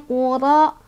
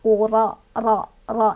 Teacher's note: Ro'nya punya sifat tafkhim. Artinya tebal, karena ro-nya berbaris fathah, jadi otomatis langsung dibaca tafkhim. Tafkhim itu, tebal itu artinya, cara bacanya ro itu membunyikan huruf seolah-olah bunyi huruf tersebut memenuhi rongga mulut kita.